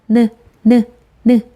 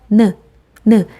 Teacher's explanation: 혀끝이 윗잇몸을 닿았다가 내려옵니다. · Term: 니은